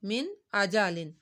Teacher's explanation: کوئی پوچھے کہ یہاں پہ آپ نے ناک پہ آواز کیوں نہیں لے کے گئے تو آپ بتائیں یہاں پر اظہار کا قاعدہ ہو رہا ہے کیونکہ نون ساکن ہے، نون ساکن کے بعد حمزہ آ رہی ہے تو یہاں پر ہم نے اظہار کرنا ہے، یعنی ناک میں آواز نہیں لے کر جانی